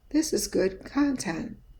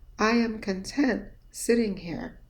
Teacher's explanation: the con is mumbled because there is a schwa present there